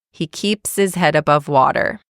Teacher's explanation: it almost sounds like is rather than his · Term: reduced forms